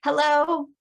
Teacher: say hello on the top of your range